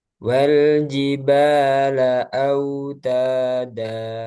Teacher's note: Jadi mat iwad itu mengganti tanwin menjadi mat.